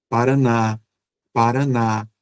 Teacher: A gente percebe um alongamento no na